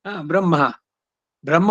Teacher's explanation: ಈಗ ಬ್ರಹ್ಮ ಅನ್ನೋದು ಬ್ರಾ ಮಹಾಪ್ರಾಣ ಅಲ್ಲ ಬ್ರಹ್ಮ ಬ್ರಹ್ಮ ಉದಾತಕ್ಕೆ ಬಂದಿರಬಹುದು ಅಲ್ಲಿ ಆದರೆ ಹೇಳಬೇಕಾದರೆ ಉಚ್ಚಾರಣೆಯಲ್ಲಿ ಮಹಾಪ್ರಾಣ ಬರಬಾರದು ಇದೇನೆ